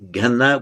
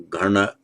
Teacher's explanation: it can be in Pali ghana with a dental na or gharna with a retroflex na. In Sanskrit it's just a dental na, ghana.